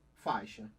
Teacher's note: O A, ele é vogal, e o I, semivogal, porque é mais fraco. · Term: ditongo decrescente